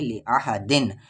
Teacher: تنوین کے بعد عین ہے اور عین حروف اخفا نہیں ہے، اس لیے اسے صاف صاف پڑھیں گے